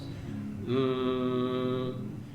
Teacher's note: we're vibrating the lips and some of the air we're allowing to kind of come up and out the nose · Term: nasal